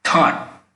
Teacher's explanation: the hump of the tongue touches a ridge of our upper gums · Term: heavy Indian th